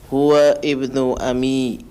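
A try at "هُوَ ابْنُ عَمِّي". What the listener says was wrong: Huwa ibnu Huwa ibnu atau huwa ibnu? Kenapa huwa ibnu? Hamzah wasal. Berarti alifnya ditulis tapi tidak dibaca. Huwab. Huwab. Ammi. Huwa ibnu ammi.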